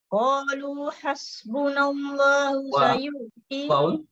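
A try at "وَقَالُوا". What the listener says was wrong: Baca waw. Waqalu.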